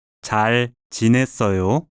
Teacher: The rising intonation indicates that this is a question.